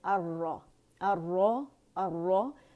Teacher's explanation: را شمسی حرف ہے، اس نے اپنے اندر لام تعریف کو مرج کر لیا، اس وجہ سے وہ پڑھا نہیں جا رہا. اسے اگر الگ سے بھی پڑھیں گے تو الرا ہی پڑھیں گے، الرا نہیں پڑھیں گے. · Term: لام شمسیہ